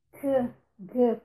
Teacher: No ponto velar, a língua toca a parte molinha do palato.